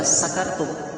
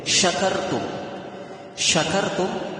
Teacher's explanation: kalau huruf shin, tentu makhrajnya kalau huruf shin itu adalah pada pertengahan lidah